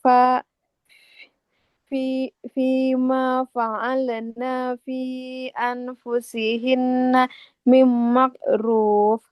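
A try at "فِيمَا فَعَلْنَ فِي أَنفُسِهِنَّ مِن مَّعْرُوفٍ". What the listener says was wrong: Fima fa'alna. Nunnya nggak boleh panjang. Fima fa'alna fi anfusihinna mim ma'ruf. Nunnya fathah tidak ada alifnya. Nggak boleh kita panjangkan. Bukan mim makruf, bukan huruf kaf, mim ma'ruf.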